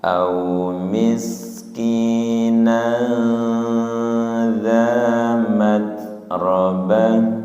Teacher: ya sin sukun tahan dan tidak mantul nggih